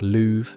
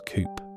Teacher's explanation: the strut vowel is rounded, so love sounds like louve and cup becomes coop